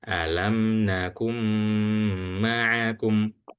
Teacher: mim yang ditahan ini atau penahanan di huruf mim itu disebut dengan gunnah.